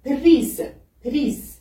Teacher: Comme vous le voyez, toujours le R devient le R roulé en langue turque.